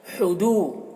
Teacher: ہا کو حلق سے ادا کریں گے اور اس کی آواز ہوا کے ساتھ میں نکلتی ہے، ہوا کے ساتھ میں.